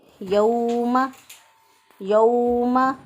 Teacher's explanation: یا لین ہوتی ہے، اب یہاں پر یہ واو لین ہے، واو لین کو ہم نرمی سے، آسانی سے اور جلدی سے ادا کریں گے، لمبا نہیں کریں گے